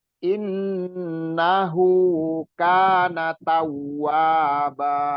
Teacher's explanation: di in-nya tadi dua harokat didengungkan, hu-nya juga dua harokat.